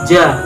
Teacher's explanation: Makhorijul huruf jim terletak pada tengah lidah dengan langit-langit.